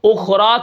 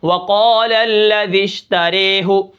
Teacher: زیر کی وجہ سے جھکا دیتے ہیں. نہ تو وہ خالصتاً کھڑی زیر بنتی ہے اور نہ خالصتاً وہ زبر بنتا ہے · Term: امالہ